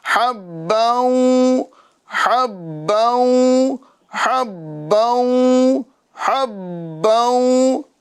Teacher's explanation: बा में कलकला जमाऊ के साथ मुशद्दत वाला करना है ताकि बा में आप रुक जाए। थोड़ी देर उसकी आवाज जारी रखें।